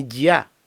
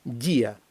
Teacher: ставимо наголос на і і дифтонг розбивається і тоді слово звучить так як воно повинно звучати дія наприклад